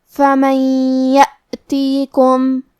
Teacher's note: کلمت فمن کے آخری میں نون ساکن ہے، پھر حرف الیا ہے، یہاں حکم ہے ادغام، لہذا ہم یہ حکم کو غنہ اور تشدید کے ساتھ ادا کریں گے